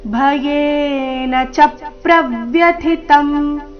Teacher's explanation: ಭಯೇನ ಚಪ್ರವ್ಯತಂ ಮನೋಮೇ [ಸಂಗೀತ] ಭಯೇನ ಚ ಮೇಲೆ ಪ ದು ಆಘಾತ ಚಪ್ರವ್ಯತಂ ಚ ಮತ್ತೆ ಪ್ರೆ ಅಕ್ಷರಗಳ ಮೇಲೆ ಆಘಾತ ಬರಬೇಕು ಭಯೇನ ಚಪ್ರವ್ಯತಂ ಪ್ರವ್ಯಥಿತಂ ಥಿ ಮಹಾಪ್ರಾಣ ಮುಂದಿನತ ಅಲ್ಪಪ್ರಾಣ ಭಯೇನ ಚಪ್ರವ್ಯತಂ ಮನೋಮೇ ಚರಣದ